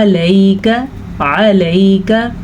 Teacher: یہ یا لین ہے تو اسے نرمی سے پڑھنا ہے اور کاف کو لمبا نہیں کرنا. اگر کوئی پڑھے علیکا تو اس نے بڑی غلطی کر دی، عین کو بھی لمبا کر دیا، کاف کو بھی لمبا کر دیا.